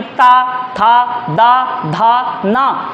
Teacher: इसी तरह दंत वाला बोल के देखो, दंत पे जीभ टकराएगी आपकी